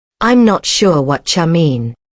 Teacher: The what you becomes whatcha.